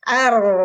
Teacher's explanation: tidak ada napas keluar berarti dia jahar